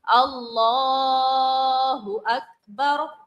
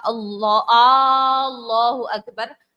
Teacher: صرف اور صرف لام کی کھڑی حرکات کو ہم نے کھینچنا ہے اور کسی بھی لفظ کو یہاں پر نہیں کھینچنا ہوتا ہے. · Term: لام کی مد